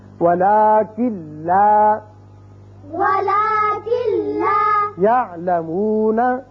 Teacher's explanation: کاف سیدھا لام سے ملے گا، نون کی آواز پیدا یہاں نہیں ہوگی، یعنی غنہ نہیں ہوگا. وَلَٰكِن لَا ولكن لا يَعْلَمُونَ. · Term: ادغام بغیر غنہ